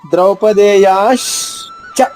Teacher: మీరు కొంచెం ష్ అనే శబ్దాన్ని కొంచెం కంటిన్యూ చేయండి, తర్వాత చా చెప్పండి, అంత సరిపోతుంది.